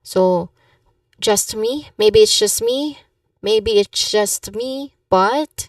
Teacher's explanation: So pronunciation-wise, you emphasize on the words just me.